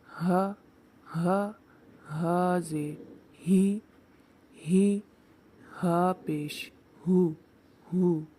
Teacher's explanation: اقصائے حلق سے ادا ہونے والا دوسرا حرف ہے ہا۔ ہا بھی حلق کے نچلے حصے سے ادا کیا جائے گا